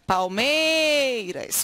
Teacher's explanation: Porque a sílaba tônica da palavra palmeiras, olha a sílaba tônica, dá uma chamadinha de casa, palmeiras. Qual foi a sílaba que se prolongou? Esta aqui, o MEI.